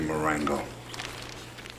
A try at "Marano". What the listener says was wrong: It's Marano. Do you see a G in that name?